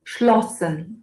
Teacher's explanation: a vogal antes é aberta e curta